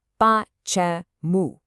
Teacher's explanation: the word for why has 3 syllables, with the stress right at the very end.